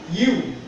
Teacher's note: এই ইয়ার উপরে পেশ আসলে একটু উচ্চারণটা ব্যতিক্রম হয়ে যায় ইউ বলতে হবে উ বলা যাবে না